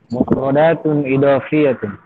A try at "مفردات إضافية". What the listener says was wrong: Do-nya jelas. Bedakan antara dal dengan do.